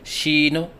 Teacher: بعض بچے شین کی ادائیگی کے وقت آخر میں نون کے اوپر قلقلہ کرتے ہیں